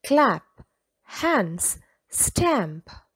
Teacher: The short vowel sound ah is repeated in the words clap, hands, stamp. We call this assonance.